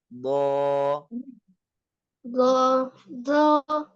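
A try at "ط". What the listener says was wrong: Masih lemah. Dikuatkan tekanannya sisinya. Digigit dulu ya supaya untuk melatih. Kemudian ditekan sisi lidahnya ke gigi gerahamnya Abdillah ya.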